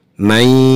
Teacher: Nah, may di sini hukumnya adalah idgham bi gunnah karena ada nun mati bertemu dengan salah satu huruf idgham bi gunnah, yaitu huruf ya. Jadi wajib di sini ketika kita mengucapkan may ada suara yang masuk rongga hidung, yang artinya harus ada gunnahnya